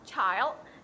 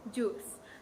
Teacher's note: bunyi ini dibuat dengan menutup aliran udara dan kemudian melepaskannya menjadi friketif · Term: africates